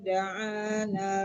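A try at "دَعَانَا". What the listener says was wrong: Da'ana panjang nanya. Coba lagi dari wa'ida.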